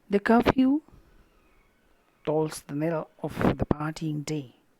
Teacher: Curfew is noun, so the first sound is stressed. Few, the sound is going down.